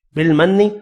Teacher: نون مشدد ہے, غنہ کریں گے